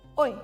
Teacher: Biasanya nadanya cepat dan turun ke bawah.